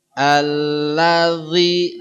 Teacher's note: dia harus Ujung lidah ketemu ujung gigi di atas kayak digigit ya tidak boleh bunyi tidak boleh ada desis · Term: huruf dalal